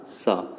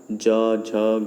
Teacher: स बोलते समय गूंज नहीं रहा है आवाज़, तो ये हो गया अघोष, ठीक है।